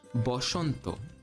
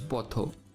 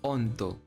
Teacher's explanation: Bengali similarly has Shwa in it, but interestingly, it's not A, it's O.